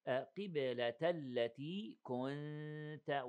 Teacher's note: we have 2 seconds إخفاء